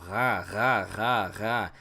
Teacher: You're putting your tongue back and you're vibrating up at the roof of your mouth in the back, and you're making a G sound. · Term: Hein